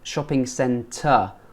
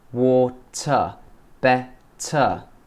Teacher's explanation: We don't pronounce the R's at the end of the word.